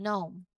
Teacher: But when we say it, we start directly with the N sound, as in gnome.